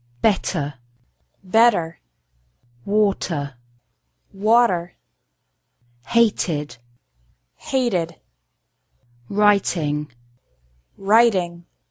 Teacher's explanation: can be different in British and American English in this situation Americans often pronounce the letter T like a quick D sound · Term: T sound